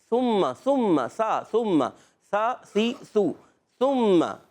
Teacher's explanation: سا کا مخرج زبان کا سرا اوپر کے دانتوں کناروں سے